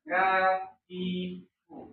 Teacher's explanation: Jadi pangkal lidah disentuhkan ke perbatasan langit-langit yang keras sama yang lunak. Jangan juga terlalu ke depan. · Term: huruf kaf